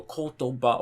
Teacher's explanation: the drop is after the third syllable. Because if it's odaka and it's 3 syllables, that means that the drop is after the third syllable. · So if you're reading and you come across the word kotoba and you remember, oh, this is a 3, then in your head you have to basically count the syllables and go kotoba, okay, it's after the ba. Whereas if you've memorized that it's odaka, you just know, okay, it drops after the last syllable